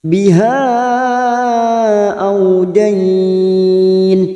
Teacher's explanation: ada mad yang bertemu dengan hamzah di lain kalimat mad jaiz munfasil 4 harokat kita panjangkan